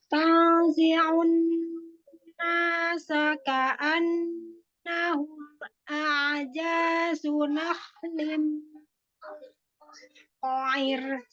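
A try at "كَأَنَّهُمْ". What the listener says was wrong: Nah, di sini Mi, ikhwanya kurang lama, kasih zaman.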